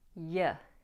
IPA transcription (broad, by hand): bɒbzjər ˈʌŋkl